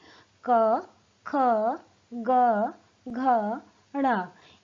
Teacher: इनका उच्चारण करते समय हमारी जीभ का पिछला भाग उठकर हमारे तालु के कठोर भाग को स्पर्श कर रहा है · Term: क वर्ग